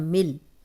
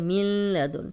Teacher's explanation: میم زیر لام مل، یہاں نون کی ذرا سی بھی آواز نہیں آنی چاہیے. ملدن، اکثر اسٹوڈنٹ ایسے پڑھ رہے ہوتے ہیں ملدن، تو نون کو نہیں شامل کرنا کیونکہ شد والے حرف سے پیچھے جو جزم ہوتی ہے وہ بالکل پڑھنے میں نہیں آتی.